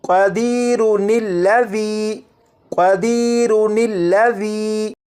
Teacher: اگر ان دونوں الفاظ کو ملا کر پڑھنا ہو تو پھر را کے بعد نون زیر نی کو پڑھیں گے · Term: نون قطنی